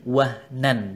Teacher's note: nun sukun atau tanwin bertemu dengan ain, wahnan, dibaca jelas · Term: izhar